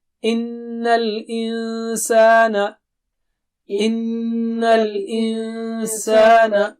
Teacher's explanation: اور نون پر غنہ ہوگا, اور انسان وہاں نون کو چھپائیں گے آپ, وہاں بھی غنہ ہوگا